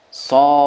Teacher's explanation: Nah, di sukunnya terakhir muncul bunyi qalqalah. Karena huruf dal kalau sukun di qalqalahkan.